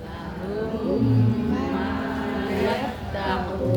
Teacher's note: Berarti itu dijenengan baca idhar, jelas. Tidak boleh, karena ini idgham, sehingga harus didengungkan. Lahum, ini mimnya bunyinya 2-3 ketuk, jadi tidak boleh dijeda. Lahum ma, itu tidak ada, mendengungnya tidak ada. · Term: idgham mimi